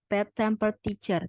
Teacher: The reason is, yang pertama alasannya, stress on other words occurring next to the word in question. Final stress compound move to a preceding syllable and changes to secondary stress, if followed by a strongly stressed syllable. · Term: variable stress